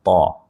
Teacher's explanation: हमें इसको जो है वो मोटा अदा करना है। इसको हमें थोड़ा सा आवाज को भारी करना है।